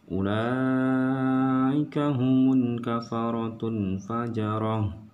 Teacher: Ketika dia berhenti, ketika teman-teman mau berhenti, huruf ta-nya tidak lagi dibaca dengan tu, tetapi dia menjadi ha besar. Nah, di sini hukumnya hukum wakaf namanya. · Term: tamar butoh